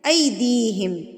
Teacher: اس کو مجہول نہیں کرنا، اس کو کھینچنا نہیں ہے، ایدیہم، دی کھینچا جائے گا کیونکہ یا مدہ ہے یہاں پر